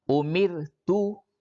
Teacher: را ساکن سے پہلے زیر ہے اس لیے اس را کو باریک پڑھیں گے